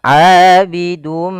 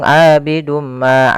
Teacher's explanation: kita masukkan tanwinnya kepada huruf mim kemudian ditahan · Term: bacaan idgham